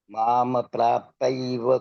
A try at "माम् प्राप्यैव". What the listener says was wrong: माम प्रापैवि प्राप्यैव, य यज्ञ का, उसका उच्चारण करना है, यज्ञ वाला।